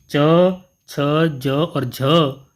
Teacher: च, छ, ज और झ जो वर्ण है वह स्पर्श संघर्षी कहलाते हैं।